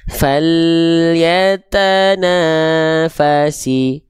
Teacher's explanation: Jadi jangan sampai huruf lam itu dilafalkan yang pertama dengan keadaan yang memantul ketika lam dalam kondisi sukun